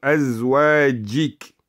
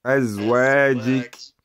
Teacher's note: Don't put a nasal sound in the جيم.